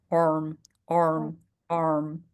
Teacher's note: the R is not like Spanish. In our in Spanish we roll the R. R is like very very solid, very strong.